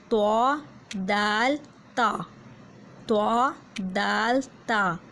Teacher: جب زبان کی نوک جب اوپر والے سامنے کے 2 دانتوں کی جڑ سے لگے گی تو یہ حروف ادا ہوں گے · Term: مخرج نمبر 12